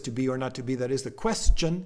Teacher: eleventh syllable but because it's unstressed it doesn't throw off the rhythm